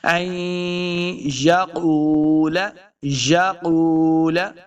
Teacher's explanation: قاف پیش واو، واو مد ہے، اس کو دو حرکات لمبا کرنا ہے۔ قاف حروف مستعلیہ سے ہے، اس کو موٹا پڑھیں گے۔